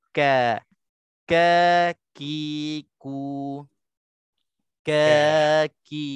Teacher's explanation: Kaf ini kita nak kena lebarkan bibir mulut sebab kaf ini dia tak tebal.